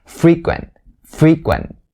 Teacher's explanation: notice that i stress the first syllable not of the second one so the primary stress is going to be the first one